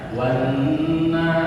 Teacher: Ketika ada tasydid atau syiddah di atas nun, maka hukumnya gunna harus ditekan, tidak boleh kurang dari 2 harokat.